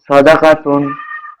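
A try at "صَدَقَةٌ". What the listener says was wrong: কপটা একটু সুন্দর হবে আবার। সাদাকাতুন।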